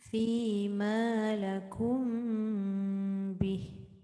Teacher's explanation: Dengung mim bertemu ba.